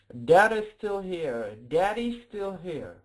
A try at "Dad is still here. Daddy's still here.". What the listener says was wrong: Perfect. You got it right.